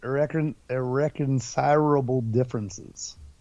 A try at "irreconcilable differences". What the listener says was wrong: Yeah, there's one too many R's there, bud.